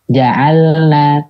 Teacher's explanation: jangan ada suara ketika perpindahannya dari lam ke nunnya